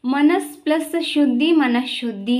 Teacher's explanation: ಪೂರ್ವ ಪದದ ಕೊನೆಯಲ್ಲಿ ಸಕಾರಕ್ಕೆ ಬದಲಾಗಿ ಶಕಾರ ಬರ್ತದೆ